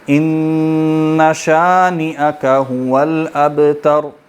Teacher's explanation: ابتر جب پڑھیں گے نا تا باریکی رہے گی، صرف را موٹی ہوگی · با ساکن ہے، کلکلا ہوگا اور آخر میں را موٹی پڑی جائے گی